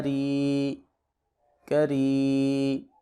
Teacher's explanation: یا ساکن ہے اور اس سے پہلے زیر ہے تو ان سارے حروف میں مدہ ہو رہا ہے، یعنی ہم ایک الف کے برابر اس کو لمبا کر رہے ہیں